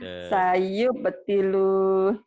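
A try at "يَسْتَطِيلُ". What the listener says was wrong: Jadi pendek Bu. Sayu butilu.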